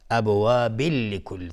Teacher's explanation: ابواب، باز بای بعدم قلقله میخواد. ابواب لکل، تنوین بهش لام ادغام بدون غنه